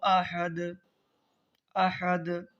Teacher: تو یہاں پر دال ہے تو سانس توڑنے کی صورت میں اس پر جزم ہو جا رہا ہے. تو حروف قلقلہ میں جزم آ جائے تو اس کی آواز ریپیٹ ہوتی ہے یعنی مخرج ٹکر کھا کر الگ ہو جاتا ہے